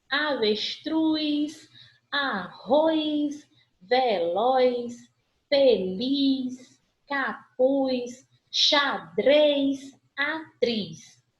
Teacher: Qual é a sílaba mais forte de todas essas palavras que a gente falou? A última. Se eu tenho a última sílaba mais forte, portanto, eu tenho palavras oxítonas.